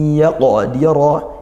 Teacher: yaqdira ini qaf sukunnya dibaca qalqalah sughra dibantulkan, dira-nya tafkhim ditebalkan ya karena dia fathah